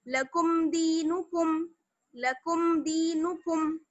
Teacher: اظہار ہوگا بنا غننے کے. جلدی سے آواز کو پڑھیں گے صاف کر کے